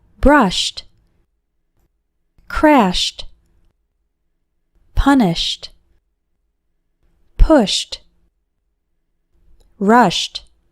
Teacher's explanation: we also pronounce Ed like T after verbs ending with an sh sound